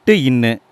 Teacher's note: நாக்குடைய நுனி அன்னத்தின் நுனியை பொருந்துவதால் பிறக்கும் எழுத்துக்கள்